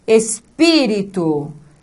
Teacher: a sílaba tônica não é a última não é a penúltima mas a anti penúltima sílaba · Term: antepenúltima sílaba